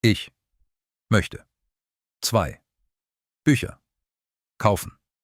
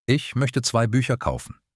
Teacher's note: Count the tricky sounds, soft ch in ich, umlaut in möchte, z as ts in zwei, ü plus ch